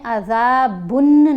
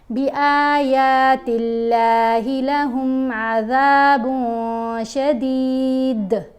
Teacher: یہاں ہم نے عذابن نہیں پڑھنا، نون کی آواز کو ناک میں چھپا کر پڑھیں گے کیونکہ تنوین کے بعد ہے شین اور شین حروف اخفا میں شامل ہے.